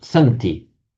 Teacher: You would have expected from the root as you would have expected to see asenti but it's not asenti the initial a just drops irregularly so it's just centi